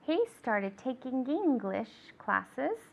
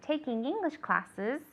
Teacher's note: Remember the N and the G, taking, okay, the nasal sound. We always want to make sure that we pronounce it.